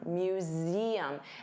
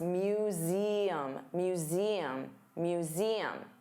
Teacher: notice you have that voiced Z sound